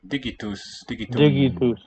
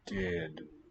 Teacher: we note that the g dropped out. And the t toward the end has voiced.